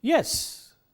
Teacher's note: I said it with a kind of tone which is known as a falling tone